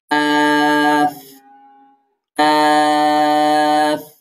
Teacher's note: জিহ্বার গোড়া থেকে একটু আগে বাড়িয়ে তার বরাবর উপরে তালুর সাথে লাগিয়ে কাফ উচ্চারিত হয়